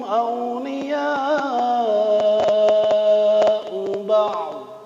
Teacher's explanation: Ainnya terbaca, ujungnya dha tapi sedikit ya. Jangan mubalaghah, jangan berlebihan.